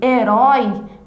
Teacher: mas eu tenho aqui um ó aberto · eu não tenho a pronúncia do som específico da vogal U, mas eu tenho aqui um O aberto